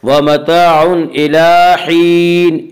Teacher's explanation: व मताउन इला हीन, इला लाम के ऊपर खड़ा ज़बर है, खड़ा ज़बर को एक अलिफ के बराबर खींच कर पढ़ेंगे।